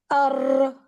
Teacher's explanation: را کو جو ہم کلک دیتے ہیں نا، اس کو تکرار دینا کہتے ہیں، which is like ار، یہ والی جو آواز ہے ار.